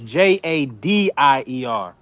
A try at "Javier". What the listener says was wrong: I thought the J was pronounced as a H.